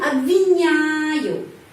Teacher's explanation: Huruf O di sini tidak mendapat penekanan, karena itu pengucapannya a. Jadi обвиняю.